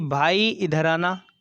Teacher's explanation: जो भाई में जो ई लगा है वो हमारा ज़्यादा खिंचा है, तो वो वहाँ हमारा पुल्लित स्वर होगा।